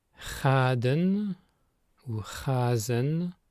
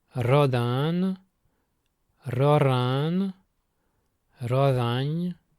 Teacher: En bavantais, le R initial non muté est sourd dans tous les mots sauf les emprunts très récents.